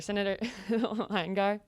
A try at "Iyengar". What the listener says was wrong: It's Iyengar with an I.